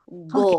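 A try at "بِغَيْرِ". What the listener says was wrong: Jadi kalau go itu mirip G banget ya. Ghain itu lebih ghariru. Ghariru.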